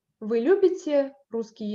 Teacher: by the end of the phrase my intonation still goes down · So I raise my voice, I raise my tone on the word любите. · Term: third intonation pattern, general question